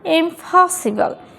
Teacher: তো এই দ্বিতীয় যে উচ্চারণটা আছে, দ্বিতীয় যে সিলেবল আছে, এই সিলেবলটা হচ্ছে স্ট্রেসড সিলেবল, আর স্ট্রেসড সিলেবলের শুরুতে পিটা আছে, সেহেতু পি এর এখানে উচ্চারণ কিন্তু প না হয়ে কি হবে, ফ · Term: অ্যাসপিরেটেড ওয়ার্ডের